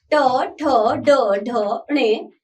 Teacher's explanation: बच्चों ट वर्ग के व्यंजन मूर्धा से स्पर्श होकर बोले जाते हैं।